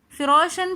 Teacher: لکم الارض، فراشن کے اندر الف ساکن اور اس سے پہلے زبر آ رہا ہے تو الف مدہ بن جائے گا، اس لیے ہم فرو تھوڑا سا موٹا کر کے پڑھیں گے، اور را کے اوپر زبر ہے تو اس لیے ہم نے را کو موٹا کرنا ہے اور الف کو تھوڑا سا کھینچ کر پڑھنا ہے